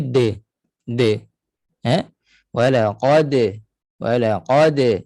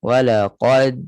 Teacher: hadirlah sifat Qalqalah untuk melepaskan tekanan pada Dal tu kalau kita tahan Dal walaqad macam kita rasa ada tekanan